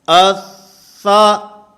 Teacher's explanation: سا کیونکہ یہ حروف محموسہ میں سے ہے اس لیے اس کی ادائیگی کے اندر سانس نے جاری رہنا ہے